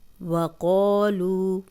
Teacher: واو پہ ہونٹ گول کریں گے، قوف موٹا ہے اور الف مدہ بھی ہے، 2 حرکات لمبا کریں گے، خالی الف پیچھے قوف پہ زبر، وَقَالُوا واو مدہ، جزم والی واو پیچھے کسی بھی حرف پہ پیش ہو تو 2 حرکات لمبا کرتے ہیں، واو مدہ ہے، دونوں کی مقدار سیم رکھیں گے۔